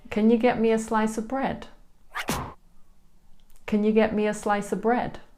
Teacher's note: because the schwa e's are unstressed, they're really hard to hear.